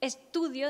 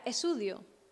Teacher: la oclusiva alveolar o oclusiva dental se la comía, no decía las T's, ella en vez de decir estudio decía esudio, y para ella era absolutamente normal.